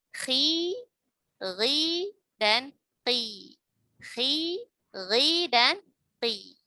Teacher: ketika huruf isti'la yang bukan huruf itbaq yaitu kha, ghain dan qaf berada pada harokat kasrah ya, maka suaranya sangat mirip dengan suara tarqiq ya, sangat mirip dengan suara tarqiq meskipun tidak kita katakan tarqiq melainkan kita katakan tafkhim nisbi karena secara praktik sudah mirip dengan tarqiq.